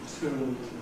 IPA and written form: tʊu (two)